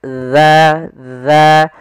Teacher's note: ujung lidah kita menempel dengan gigi di atas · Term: huruf dalal